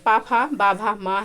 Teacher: प वर्ण का उच्चारण स्थान ओष्ठ है